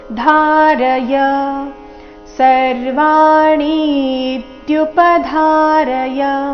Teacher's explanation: ಧಾ ಮಹಾಪ್ರಾಣ ದೀರ್ಘ, ಚರಣದ ಕೊನೆಗೆ ಯ ಇದೆ, ಯಾ ಇಲ್ಲ, ಯ ಎಂದು ಬರಬೇಕು.